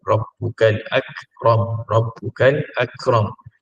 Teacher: maka Kaf itu adalah sifat hamsnya tapi tidaklah ketara